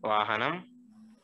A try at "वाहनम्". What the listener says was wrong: वाहनम वाहनम में अनुस्वार आएगा।